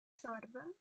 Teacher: Romanian R is trilled. Well, rolled, not trilled. So don't be afraid of rolling it. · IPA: /tʃorbə/